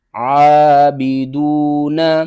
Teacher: سے ادا کرنا ہے، اور دال کے بعد دیکھیں واو ہے، واو حروف مدہ میں سے ہے، ایک الف کے برابر کھینچ کر پڑھیں گے · زیر بی، عابی، دال واو پیش دو، عابدو، نون زبرنا، عابدون، عین کو آپ نے حلق کے درمیان والے حصے سے ادا کرنا ہے